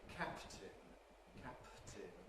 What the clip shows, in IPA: ˈkæptɪn